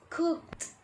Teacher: The right pronunciation of the past tense for the verb cook is cooked. Verbs that end in a voiceless sound, the ed ending sound is pronounced as a t. There is no extra syllable added.